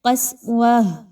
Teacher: قاف موٹا کر کے پڑھا جائے گا